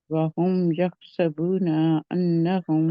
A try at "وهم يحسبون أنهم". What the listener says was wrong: وہم یحسبون، میں کہہ رہی ہوں نون کو لمبا نہیں کھینچنا، آپ الف لگا رہے ہیں اس کے آگے.